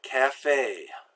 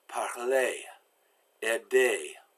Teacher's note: like the letter A except you pull your lips back more it's a pure sound there's no diphthong going up and down in it